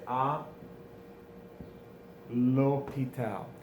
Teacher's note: It doesn't actually start with a vowel. It starts with the H. But often these words with the H, we don't pronounce it. It's a silent H, un H muet, or an aspirated H or a silent H.